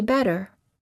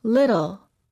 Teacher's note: this sound is also sometimes called a tapped T because you quickly tap the tip of the tongue on the gum Ridge